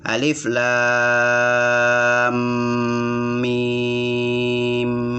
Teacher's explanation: mim ketemu dengan mim, maka ini diberi gunnah sebanyak 3 tekanan, 3 nada.